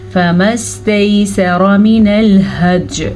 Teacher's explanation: را کو پر پڑھ لیجیے گا، را پہ زبر ہے، یا لین کو لمبا نہیں کرنا، سین کو بھی لمبا نہیں کرنا، سین پہ زبر ہے۔